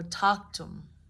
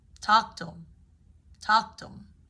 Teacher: He, him, have typically will drop the H depending on the situation. So that way you just end up hearing, like, for example, let's see who he is and talk to him.